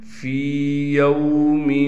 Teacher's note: حروف مدہ ہونے کی وجہ سے فا کو ایک الف کی مقدار کھینچیں گے